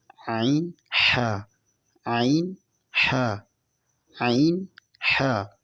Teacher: حمزہ، ہا حلق کے نیچے والے حصے سے ادا ہوتا ہے، اور اس کے بعد ہے عین، حا حلق کے درمیان والے حصے سے ادا ہوتے ہیں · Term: حروف حلقیہ